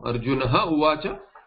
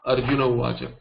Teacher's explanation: Now akara and followed by a or ich, meaning any vowel other than a, the akara precedes a visarga which is followed by any vowel except a, then the visarga drops. Like arjunaha uvacha will become arjuna uvacha, visarga lopa.